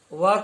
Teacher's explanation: व का उच्चारण स्थान दंतोष्ठ है